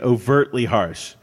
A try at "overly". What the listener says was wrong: Overly, not overtly.